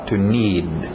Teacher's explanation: Engole aquele D no final.